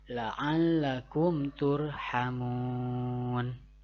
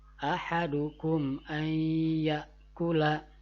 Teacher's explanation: dibaca dengan jelas dan tidak boleh ada dengung artinya tidak boleh ada panjang atau tidak boleh ditahan dulu huruf